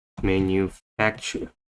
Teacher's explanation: the stress put on the third syllable, manufacture